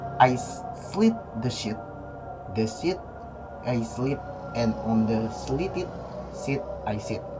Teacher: ipanjang seperti i, bahasa Inggris tapi lebih panjang dan tegang. Ipendek, i lebih pendek dan lidah lebih rileks.